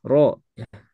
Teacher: huruf ro makhrajnya huruf ro itu ujung lidah ke langit-langit ya ujung lidah ke langit-langit mungkin kita akan coba cari huruf